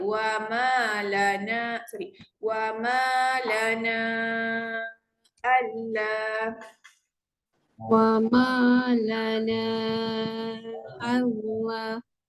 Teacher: Na tu kita baca 4, huruf mat berjumpa dengan hamzah.